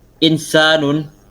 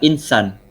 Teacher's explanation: penghilangan vokal panjang a dari kata insanun menjadi Insan